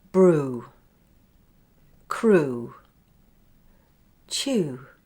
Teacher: These E W words are pronounced without the /j/. Just the /uː/